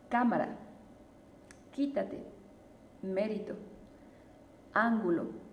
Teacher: En las sílabas esdrújulas nos vamos a dar cuenta que la que tiene este el sonido más fuerte pues va a ser la antepenúltima